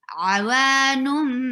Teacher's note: And there will be iqlab. You are changing the sound of tanween into meme. Noon into meme.